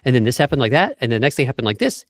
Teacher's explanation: everything goes up at the end of the sentence. The pitch keeps rising like this in intonation. It's like a melody that keeps going up. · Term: uptalk